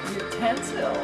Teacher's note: Basahin nyo ng tama yung dapat nasa second syllable yung stress.